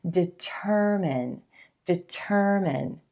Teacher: Your emphasis should fall on the second syllable and the as in purple sound.